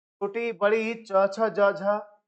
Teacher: तालु वाला भाग यानी हमारे मुख के भीतर का ऊपरी हिस्सा सब तालु कहते हैं, वहां से उसका उच्चारण होता है। ठीक है, से तालु की छत का पिछला भाग जो होता है वहां उच्चारण होता है।